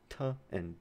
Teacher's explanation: airflow is held right behind the alveolar ridge. T and d is released. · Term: alveolar sounds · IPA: [t] [d]